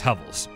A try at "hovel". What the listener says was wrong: Sounds like you're saying shovel. It's hovel.